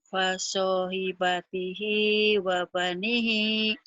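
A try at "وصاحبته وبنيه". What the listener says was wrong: Bukan pa tapi wa ya. Waso. Waso.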